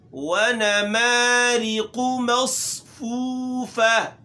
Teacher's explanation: ونما واو ہے، اس میں وہی بات کی سختی نہ پیدا کی جائے. ریقو را ہے، اس کے نیچے زیر ہے، تو جب را کے نیچے زیر آئے تو وہ باریک ہوتا ہے